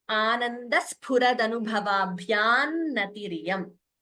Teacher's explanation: When the anuswara combines with na, we could combine the sandhi and chant it as Anandas Puradanu Bhavabhyam Natiriyam.